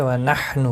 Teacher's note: حا کا خاص خیال رکھیں تاکہ وسط حلق سے ادا ہو جائے